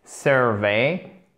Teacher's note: vous avez l'accent tonique sur la première syllabe. Et par contre, la seconde syllabe, il faut bien vous méfier parce que c'est une diphtongue.